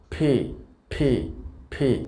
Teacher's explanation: আমরা সাধারণত উচ্চারণ করে থাকি পি। তো এটি সঠিক উচ্চারণটা আসলে হবে ফি, অর্থাৎ মুখ থেকে বাতাস বের হয়ে যাবে